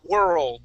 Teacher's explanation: you're kind of like swallowing that R into the L